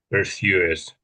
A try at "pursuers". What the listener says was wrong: Yeah, I think the in the English we tend the R. You're doing the R a little bit too strong. I think it sounds a bit American when you're saying it that way. So pursuers, pursuers, pursuers.